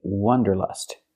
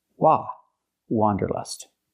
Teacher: We cannot use the short uh sound, like cup and up. We have to use the open ah sound.